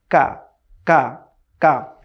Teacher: জিহ্বার যে গোড়ার জায়গাটা আছে, তার থেকে একটু সামনে, সেখান থেকে সাউন্ড উচ্চারিত হয় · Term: দ্য লেটার কাফ